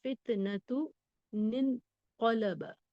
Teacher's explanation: اب یہاں پہ سمجھ لیجئے नून साकिन है, तुन में फितनतुन में नून साकिन की आवाज है, अगर उसके बाद हमजतुल वस्ल है और उसके बाद साकिन हर्फ है। फितनतुन के ता के बाद हमजतुल वस्ल है और उसके बाद साकिन हर्फ नून है, तो हम क्या करते हैं, उस तनवीन को जेर देकर पढ़ते हैं। इसी नून को नून कुतनी कह रहे हैं।